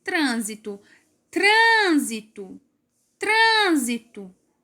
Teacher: A sílaba mais forte é o trã. Trã. Trânsito.